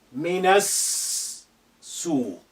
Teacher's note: The alif is silent because it's not at the beginning of a sentence. The lam is silent because of sin is a sun letter which is carrying shadda. So we linked na to and with the first sin which is hiding there with shadda, minas suq.